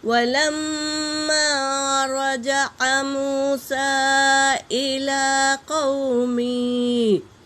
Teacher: وَلَمَّا رَجَعَ مُوسَىٰ إِلَىٰ قَوْمِهِ، واو اور لام پر حرکت ہے میری بہنوں، جلدی پڑھیں گے، اور میم پر تشدید ہے، اور میم الف مدہ ہے، غنہ کرتے ہوئے الف مدہ ادا کریں گے · اور سین پر مد ہے، مد منفصل، اسے 3 سے 4 الف کی مقدار کھینچیں گے، اور لام پر کھڑا زبر ہے تو ادا کریں گے، ایک الف کے مقدار کھینچیں گے۔